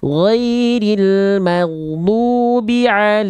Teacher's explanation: huruf Dad itu makhrajnya kan dari pinggir lidah disentuhkan ke gigi geraham boleh kiri boleh kanan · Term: sifat istitalah